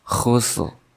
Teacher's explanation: Di sini sama seperti di ayat pertama, yaitu ada sin kemudian ra yang diwaqafkan karena di akhir kalimat ataupun di akhir ayat, maka ra-nya tidak dijelas, tidak dibaca jelas, makanya sedikit saja.